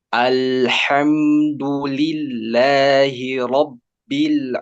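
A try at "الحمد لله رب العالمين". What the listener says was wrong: Ada mat baru di situ. Saya tahu ainnya itu tadi agak mikirnya naroknya, jadi mikirin ain, jadi harokatnya keseret.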